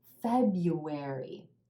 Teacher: there's an R in there that you don't actually say